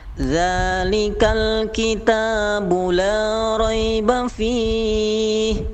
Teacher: Ketika kita membaca la raiba fih, maka la-nya jangan terlalu panjang, hanya 2 harokat. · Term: mat tabi'i